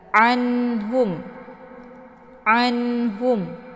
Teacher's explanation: Ini dinamakan dengan idhar hakiki. Cara bacanya, nunnya dibunyikan secara jelas atau jelas bunyi n-nya. Cukup ditekan saja, tidak perlu ditahan.